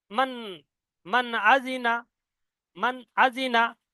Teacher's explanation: মিম নুন জবর মান, এই মান যে নুন সাকিনের আওয়াজটা পরিষ্কার হচ্ছে, একে বলা হয় জাহির। জাহির মানে পরিষ্কার করা বা ভালো করে পরিষ্কার করে উচ্চারণ করা।